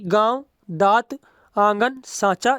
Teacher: अनुनासिक में हवा किससे निकलती है नाक और मुख से